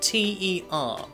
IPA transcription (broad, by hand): tə